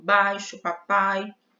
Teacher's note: ditongo oral ou vogal aberta o ditongo oral né gente afundar passagem do ar é feita exclusivamente pela boca